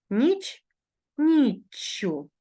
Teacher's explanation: з вами пам'ятаємо що закінчення у таких словах у нас ю якщо основа іменника в початковій формі закінчується приголосним звуком то в орудному відмінку однини відбувається подовження цього звука